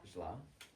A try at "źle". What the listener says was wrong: Źle. Źle. In Polish language, make sure you pronounce every single letter. So there are 3 letters in the word źle, and the last one is e, źle.